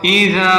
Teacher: ذال کو نرمی سے ادا کریں، ذال کو تھوڑا سا کھینچیں کیونکہ اس سے آگے الف مدہ ہے